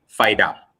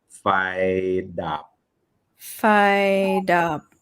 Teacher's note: So, fi is normal tone. Dap is low tone.